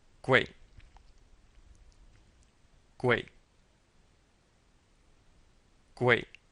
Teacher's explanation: it's Fourth tone so we pronounce it sharply